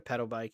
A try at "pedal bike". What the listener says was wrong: way too fast. It sounded a little like something else, bro. Can you slow down and enunciate, please, just so you don't have to reiterate what you said?